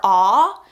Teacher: Now I'm noticing as I say that, and as I did the letters training, that technically I don't believe ah would be a glided sound or a diphthong because my mouth does not move. And when I say ah, I am talking about AW and AU as the graphemes to represent that sound.